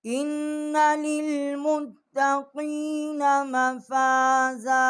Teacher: हमज़ा को हमने नून के साथ मुशद्दद किया है और यहाँ हमने गुन्ना किया है। लाम को हमने ता के साथ जो है वो मुशद्दद किया है।